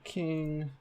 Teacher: aspiration occurs in the onset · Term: aspirated k